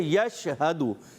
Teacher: یش کریں گے تو قلقلہ ہو جائے گا, اس سے بچنا ہے